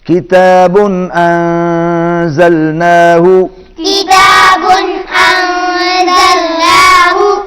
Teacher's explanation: یہاں نون پر اخفا ہوگا، آواز ناک میں جائے گی